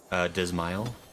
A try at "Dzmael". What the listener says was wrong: Oh, Zamail. The D is silent.